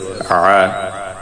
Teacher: আইনের মাখরাজ হলকের মধ্যখান